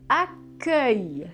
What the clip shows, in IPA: akɶj